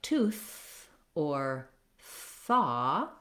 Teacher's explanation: When I'm saying a word like tooth or thaw, my voice is not on, and those THs are called voiceless THs, and the symbol for them is the theta symbol, which starts with a voiceless TH.